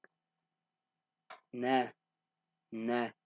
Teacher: So the noon, you use your tongue, the back of your tongue.